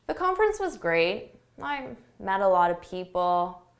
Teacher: A lack of enthusiasm, your intonation goes down, your volume goes down. Just think of it as being very tired or bored or not interested.